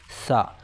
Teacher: जब हम सा कहेंगे तो जो हमारी जबान की नोक है वो दांतों से बाहर आएगी थोड़ी सी · وہ کیا کہ سا نرم اور باریک، سین سخت اور باریک، صاد پر۔ تو جب ہم سا کہیں گے تو جو ہماری زبان کی نوک ہے وہ دانتوں سے باہر آئے گی تھوڑی سی